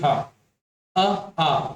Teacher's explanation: ह का उच्चारण स्थान क्या है, तो कंठ है